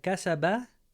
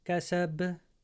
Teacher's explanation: We don't want to do a fatha like kasaba, but kasab